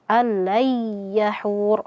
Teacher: Maka di sini hukum tajwidnya adalah idgham bila ghunah. Ya, kita masukkan nunnya kepada huruf lam tanpa disertai gunah. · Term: idgham bila gunnah